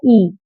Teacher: वो स्वर जिन्हें हम स्वतंत्र रूप से बहुत ऊंचा बोल सकते हैं और जीभ को तालव्य के पास ले जाते हैं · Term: संवृत स्वर